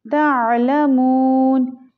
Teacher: तालमून, आइन को हलक से निकाल के पढ़ेंगे। तालमून, यहाँ पर मीम को लंबा करेंगे क्योंकि ये वाव मद्दा है